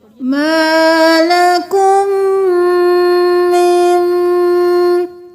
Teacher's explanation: اب یہاں پہ ہم من نہیں کریں گے، دوبارہ ہم نون کو چھوڑ کر پھر میم کے ساتھ میم کو ملائیں گے، میم۔ اب دونوں میم پہ غنہ ہوگا